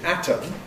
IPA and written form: ˈætəm (atom)